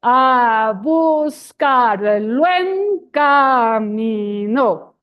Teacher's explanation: it is the drop of the S in between vowels. That also happens in some places in Colombian Spanish.